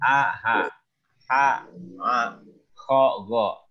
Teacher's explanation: Yang paling bawah, yang paling pangkal alif atau hamzah dan ha, tengah itu ha dan ain, yang paling atas kha dan gha. Kamu bisa raba tenggorokannya, nah itu tempat keluarnya huruf. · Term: huruf tenggorokan